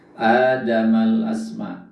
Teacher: al asma itu alif lam qamariyah. Kenapa? Karena lamnya dibaca dengan jelas.